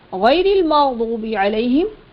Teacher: मग़दूबी में दाद हुर्फ मुस्तअलिया है, मोटा पढ़ेंगे